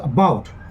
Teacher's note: so that second syllable is stressed, highlighted. That is called accent or stress, and we indicate it by this slant line above the vowel sound. · the diphthong ow, and we exert more lung power while pronouncing it. So about, so that second syllable is stressed, highlighted.